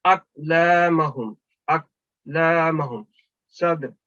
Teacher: تو اس کے درمیان میں وہ جو ساکن کلکلا حروف آئے ہیں تو آپ نے پھر وہ ہلکے کلکلا کے ساتھ ادا کرنا ہے. اقلامہم اقلامہم صد, کیونکہ یہ بیچ میں مڈل میں آ رہا ہے, یہ بھی کاف مڈل میں آ رہا ہے, یہ بھی تو مڈل میں آ رہا ہے, تو ہم اس کو ہلکے کلکلا کے ساتھ ادا کریں گے. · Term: ہلکا کلکلا